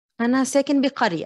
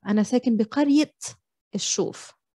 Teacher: there's an it ending when you're annexing a noun that ends with the round تا